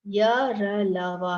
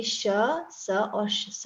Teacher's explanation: यरलव अल्प पाण और सघोष है वहीं पर श स और स क्या है महाप्राण और अघोष है